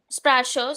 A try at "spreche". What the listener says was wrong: Spreche. It's Spreche, not Sprache. Spreche.